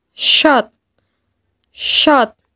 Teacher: ketika kita melafalkan huruf shot, maka posisi lisan bagian pangkal terangkat. Sementara, bagian depan pun menutupi langit-langit. Sehingga suaranya menebal.